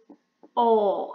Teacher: my tongue would be in middle position, but it would be slightly back. It would be in back position as well. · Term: aw sound